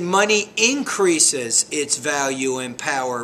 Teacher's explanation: because the verb ends in an S ending, you do need to create an additional syllable there